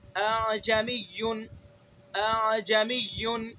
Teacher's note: تو ہمیں کس طرح سے پڑھنا ہے؟ اعجمی، پہلے حمزہ کو تحقیق سے ہی پڑھنا ہے، دوسرے حمزہ کے اندر تسہیل کرنی ہے